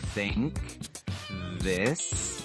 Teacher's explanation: For both, you need to place your tongue between your teeth. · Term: TH sounds